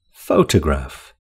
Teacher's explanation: It's the first syllable that's stressed in the word photograph.